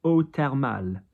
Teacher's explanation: TH in French is a T. It's hard. We don't have a TH in French pronounced as a th.